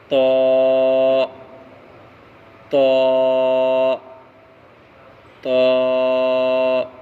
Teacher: طا کا مخرج زبان کی نوک اور اوپر کے دونوں دانتوں کی جڑ